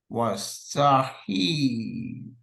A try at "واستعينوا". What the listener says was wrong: Not he. That's an ayn. It's not a ha, it's a ayn, like abid and ubaid and ayn. It's an ayn. This is an ayn. واستعينوا. Not he. He.